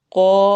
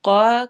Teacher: واو میں ہونٹ گول ہوں گے، قو، قاف کو موٹا پڑھنا ہے اور الف مدہ کرنی ہے، قا کر کے نہیں پڑھنا، قو جس طرح ہم نے اپنے ہونٹ کیے ہوں گے قوف کو ادا کرتے ہوئے، ویسے ہی ہم الف کو بھی موٹا ہی ساتھ ہی ملا دیں گے۔